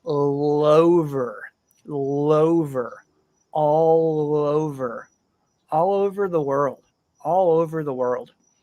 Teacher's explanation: use the L Sound in all to connect to the O in over